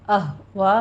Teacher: وا میں ہمارے پاس مد متصل واجب ہے اور اس کو 5 کاؤنٹ کرنا ہے